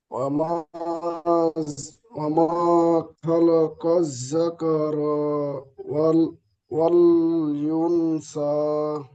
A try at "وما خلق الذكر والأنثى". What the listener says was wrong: জাকা র টান হয়ে গিয়েছে, র টান দিলে হবে না। জাকা র, জলদি পড়তে হবে। হারাকাত আছে।